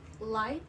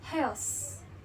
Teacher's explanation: locals pronounce the A and O sounds in words like light and house. The pronunciation of the vowel become more centralized. Light sounds a bit like light, and house sounds a bit like house.